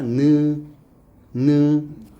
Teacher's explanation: 해봐 느. 그러면은 혀가 이에 살짝 닿았고 느 소리가 나지. 그치? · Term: 니은